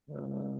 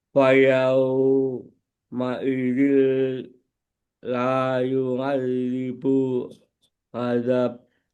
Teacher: la panjang lanya dipanjangin 2 harokat